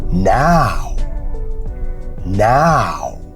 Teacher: the a transitions to a u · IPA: /aʊ/